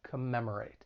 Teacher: it has four syllables the stress is on that second syllable